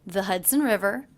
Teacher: the word the pronounced with the schwa